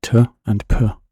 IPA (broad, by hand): tʰ and pʰ